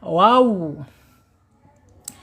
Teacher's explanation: kalau wawu itu dari belakang sampai ke depan. Wow ya, monyong gitu ya.